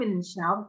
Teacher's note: Kalau Anda wakafkan min syarr itu tebel.